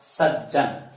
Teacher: सत प्लस जन, तय जय में बदल जाएगा